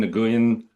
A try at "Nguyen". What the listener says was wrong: Actually, you don't pronounce the G, which is Nguyen, something like that.